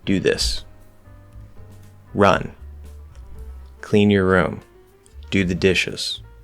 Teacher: it needs to feel firm and solid so we use a falling tone at the end